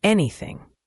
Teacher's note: The th in anything is similar to the th in thank you. That soft th sound where your tongue is slightly between your teeth.